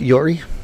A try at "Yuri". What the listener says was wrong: Yori? Yori? Who the hell's Yori? Yuri. That's not how you say that. It's a you. Her name's Yuri.